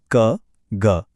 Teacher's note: पहला है अल्प प्राण, जहां बोलते समय बहुत कम हवा निकलती है